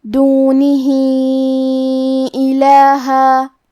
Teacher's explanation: یہاں حکم ہے مد صلہ کبریٰ. ہم اپنی آواز اس مد میں 2 سے 4 مد کے برابر لمبی کریں گے